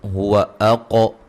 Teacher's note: قاف کو موٹا, قاف پہ قلقلہ کریں گے, اور را کو موٹا ادا کریں گے.